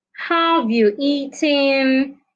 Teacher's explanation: your voice goes up at the end of that question